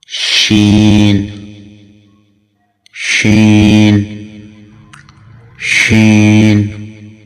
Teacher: جب وسط لسان مقابل کے تالو کے ساتھ نہیں چپکتا بلکہ معمولی سا فاصلے پر رہتا ہے تو حرف شین ادا ہوتا ہے۔